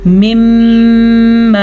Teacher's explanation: میم کے اوپر شد ہے تو میم پہ غنہ کریں گے